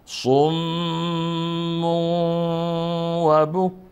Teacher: همچنین تنوین داره بعد از تنوین حرف وا آمد پس اینجا حرف وا ادغام میکنیم